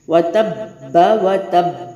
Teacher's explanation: मैंने कलकला किया है, बड़ा बाउंस किया है, यानी हरूफ कलकला पर जब तशदीद आए। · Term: बड़ा कलकला